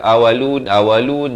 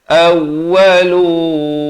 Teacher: itu bersabdu, mesti tekan awwalun. Jangan baca awalun, tak betul.